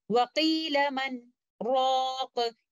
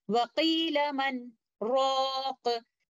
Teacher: So instead of doing Idgham here, we will recite Noon Sakina and letter Ra clearly, because due to Sakht, both of the letters are not meeting each other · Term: Sakht, a breathless pause